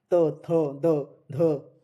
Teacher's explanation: हमारी जीभ का जो पहला वाला होता है वो दांत को टच कर रहा है। त थ द ध इसलिए इसे त वर्ग की ध्वनियां यहां से उत्पन्न होती है।